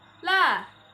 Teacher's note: ujung permukaan lidah yang ditekan ke gusi di atas bagian kapak atau gigi atas